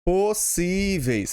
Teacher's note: Paroxítona, porque tem a sua sílaba forte na penúltima.